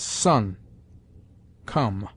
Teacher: The short O has sometimes the sound of close U, as sun, come.